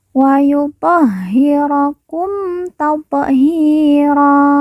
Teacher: hi kita baca panjang 2 harokat karena di depannya terdapat huruf ya sukun atau ya mati yang merupakan tanda baca panjang 2 harokat.